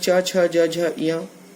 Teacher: कहीं होठ मिलते हैं, कभी जीभ क वर्ग के अंतर्गत कंठ का स्पर्श होता है जीभ से, च वर्ग के अंतर्गत तालु का जीभ से स्पर्श होता है